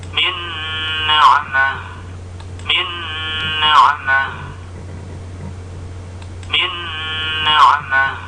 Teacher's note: Kemudian huruf idgham bi gunnah ditasydidkan, ditahan kira-kira 2 ketukan dan disertai dengan sengau.